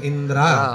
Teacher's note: इ ला स्वर नाहीये इंद्रा द्राला स्वर आहे